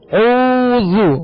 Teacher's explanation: اس میں ہونٹوں کو گول کریں گے، ہونٹوں کو کامل گول کریں گے ورنہ مجھول پڑا جائے گا